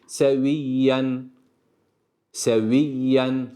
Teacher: Şedde var ama çok fazla bastırmıyor seviyyen şeklinde değil seviyyen seviyyen normal yine Ala az önce ifade